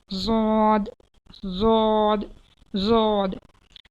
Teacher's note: ज़बान की करवट को ऊपर के दाढ़ों की जड़ से लगाए, मतलब ज़बान के जो साइड का जो हिस्से होते हैं, साइड, तो वो उसकी जैसे मुड़ जाती है ना ज़बान की करवट, उसे ऊपर की दाढ़ों की जड़ से लगाएं।